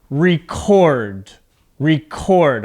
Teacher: my voice goes up at the end · your voice goes up at the second part of the word as a two-syllable verb